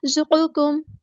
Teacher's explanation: زا باریک سختی سے ادا کرنے ہیں، حروف صفیریہ میں سے۔ قاف ہمارا ہیوی لیٹر ہے، پورا ادا کریں گے۔